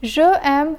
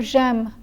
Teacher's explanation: In French, the final vowel from je drops and is replaced by an apostrophe when the following word begins with a vowel or a mute H. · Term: elision